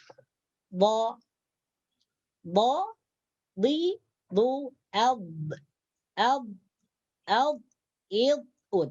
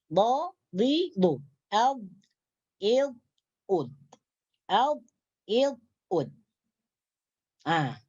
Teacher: Jadi ketika membaca huruf dhad, maka tepi lidah ni dia terangkat sampai hujung lidah ni. Sampai hujung lidah terangkat ke atas.